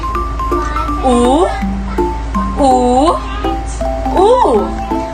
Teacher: naman ay likod pagitna pabilog o o o ang panghuling patinig ang letrang u ay palikod pagitna pabilog